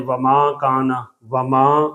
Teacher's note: ما وما کانا کو جب ہم نے وما کہا تو ایک ناک میں آواز جانے سے ایک غنے کا حرف پیدا ہو گیا